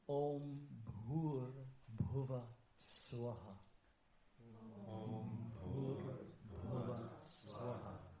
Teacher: there's like an echo of the previous vowel with the ha in front of it. So we said swa, it becomes swaha. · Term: Visarga